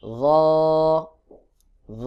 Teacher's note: র জিহ্বার আগা থেকে আওয়াজটা গোল মতো করে উচ্চারণ হবে।